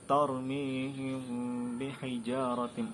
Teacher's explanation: Maka cara bacanya itu dengan didengungkan dengan tempo 2-3 harokat. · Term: ikhfa syafawi